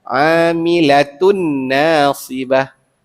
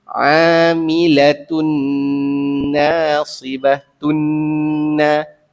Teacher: nun yang bersabdu, dengungnya dua harakat sempurna.